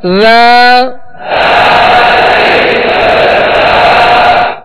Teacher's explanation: ذال کو نرمی کے ساتھ پڑھنا ہے، اس میں سختی سیٹی کی آواز پیدا نہ ہو، نرمی کے ساتھ ادا کرنا ہے.